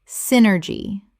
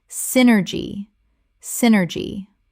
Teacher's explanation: Three syllables with the stress on the first and the Y making an I sound.